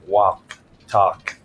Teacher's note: So words like talk, for example, TALK, I barely pronounce the L.